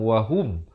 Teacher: Ha baris dhammah, bunyi hu, bukan bunyi ho.